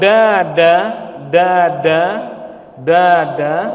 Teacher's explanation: kalau dada dada dada itu ujung lidahnya menyentuh pertengahan langit-langit